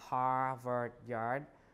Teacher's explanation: we talk about that right uh especially in New England and New Yorkers uh they uh drop the r after a vowel remember post vocalic R so the r in all of these uh positions uh Harvard